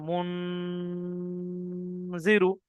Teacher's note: মুন বলে আওয়াজটা নাকে ধরে রাখতে হচ্ছে, যেটাকে আমরা গুন্না বলি